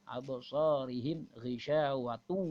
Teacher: tanwin bertemu wawu. Ya, hukum tajwid yaitu idgham bi gunnah. An-nya hilang jadi wawu.